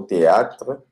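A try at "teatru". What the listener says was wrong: Ce n'est pas avec hiatus.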